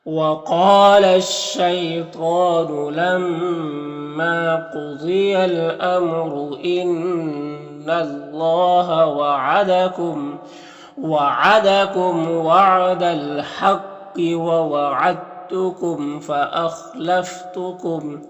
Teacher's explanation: मीम में इज़हार शफ़वी होगा, मीम को ज़ाहिर करके जल्द पढ़ेंगे। ख़ा हुरूफ मुस्तालिया में से पुर पढ़ेंगे